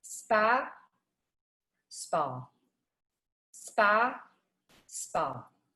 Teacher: if you can see this it really it's very subtle but there's just a little rounding that's happening on my lip when i'm doing the new york ah